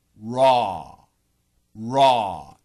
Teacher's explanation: when you go from the r to the aw don't let the tip of your tongue touch anywhere except for the aw raw raw it's a very vertical sound